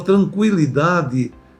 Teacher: Na palavra tranquilidade, no UI, no UI, o U tem som. Então o UI vai formar um ditongo.